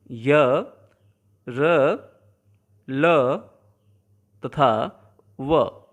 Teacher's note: इन्हें बोलते समय हमारे होंठ न के बराबर हिलते हैं। जीभ, तालु, दांत और होठों का आपस में स्पर्श तो होता है, पर कहीं भी पूर्ण स्पर्श नहीं होता, वह भी मात्र क्षण भर के लिए। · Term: अंतःस्थ वर्ण